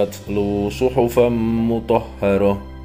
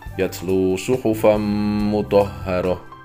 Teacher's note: Jawabannya adalah aturan idgham bighunah, yang terjadi ketika tanwin fathah bertemu dengan huruf mim. Untuk melafalkannya, tanwin disamakan dengan huruf mim, dilantunkan, dan ditahan selama dua ketukan.